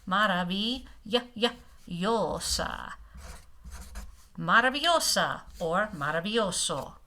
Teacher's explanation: The V is nice soft B sound, not a VV, no vibration.